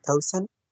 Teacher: That's an elision of the final D sound.